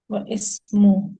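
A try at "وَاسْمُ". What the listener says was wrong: नहीं, वह इस्मु नहीं पढ़ना, वस्मु पढ़ना है। वस्मु पढ़ना है। वस्मु, वस्मुल। मैंने जेर खामखा लगा दी, वस्मु पढ़े।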